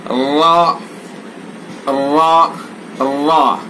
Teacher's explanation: जबान का किनारा और जबान की पुश्त सना उलिया रबाई के मसूड़ों पर लगाएं।